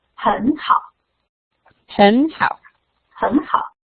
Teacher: two third tone together. So you change the first one to the rising tone, keep the second third tone.